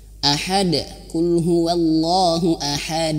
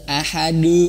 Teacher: karena huruf Dal itu memiliki sifat e tipis ya e tidak tebal maka pantulannya bukan tebal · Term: Qalqalah